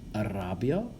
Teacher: the r in latin you want to trill it a bit if you can